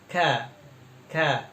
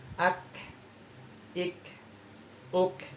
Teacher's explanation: Jadi kalau huruf kaf, kita perhatiin ada nafas yang keluar. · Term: hams